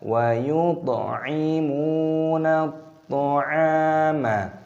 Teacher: Wa yut'imuna at'ama, alif lam samsiyah, ini toknya dibaca qalqalah, dipantulkan suaranya